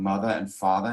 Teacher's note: issue with R's dropping after vowel sounds, like saying mother and father instead of mother and father, which we do in North America for the most part.